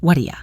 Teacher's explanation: The T in what becomes a flap T, which sounds like a soft D, and are you reduces to aya.